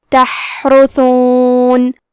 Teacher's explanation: کلمت تحرثون میں حرف الحا ہے. حا کی ادائیگی حلق کے درمیان والے حصے سے ہے. کیونکہ یہاں حا ساکن ہے تو ہم یہ حرف کو ہمزے سے پڑھیں گے.